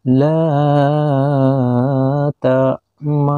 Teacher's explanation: Ismam menurut ilmu tajwid ialah mencampurkan bunyi domah pada sukun dengan memonyongkan bibir, tapi tanpa harus mengeluarkan bunyi domah secara jelas